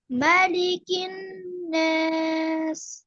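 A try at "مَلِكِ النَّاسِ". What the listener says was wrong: মাতে হালকা টান হয়ে যাচ্ছে। মালিকিন, মালিকিন নাস, মালিকিন নাস। দ্রুত, হ্যাঁ বলেন আরেকবার। তাহলে হরকত, এগুলো সব কিন্তু হরকত। এক জবর, এক জের, এক জের, তাহলে সবগুলাই হরকত, দ্রুত বলতে হবে। এক জবর, এক জের, এক পেশকে হরকত বলে। হরকতের উচ্চারণ তাড়াতাড়ি করতে হয়, তাহলে আমরা তাড়াতাড়ি পড়বো এখানে। আর ওয়াজিব গুন্না যেহেতু এর পরে রয়েছে, এই জন্য এখানে একটু বেশি করে গুন্না করব।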